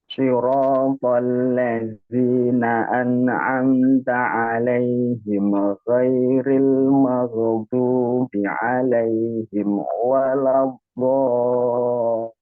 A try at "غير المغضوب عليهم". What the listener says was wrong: Hati-hati huruf ghain, dia bukan huruf qalqalah. Ghain bukan huruf qalqalah, dia nggak punya sifat qalqalah ya. Salah satu kesalahan yang sering terjadi oleh orang-orang tua kita misalnya, mengkolkolahkan huruf ghain. Mag, nah itu mag. Ghairil maghdub, ghairil maghdubi alaihim. Jadi sifat rakhawanya jalan huruf ghain, tapi nggak boleh dipantulkan suara itu. Karena dia bukan huruf qalqalah. Ghairil maghdubi alaihim waladdallin.